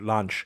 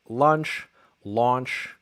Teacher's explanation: I have an Israeli accent I'll probably say it with an open a sound